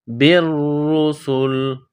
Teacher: کو را کے ساتھ ملانا ہے، را کو دبانا ہے، بالرسل، سین میں سیٹی کی آواز پیدا کرنی ہے